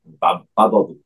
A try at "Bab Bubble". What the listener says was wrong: So when we pronounce it, it's bab, not babe. It's bab. Bubble.